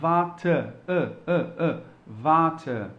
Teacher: Então fica um pouco ambíguo para quem está escutando se é um A ou se é um E. Na verdade, é algo que está entre os dois, é um som que a gente chama, tem um nome que é schwa, é o nome desse som, tá?